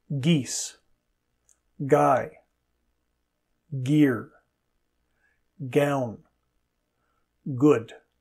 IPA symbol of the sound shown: g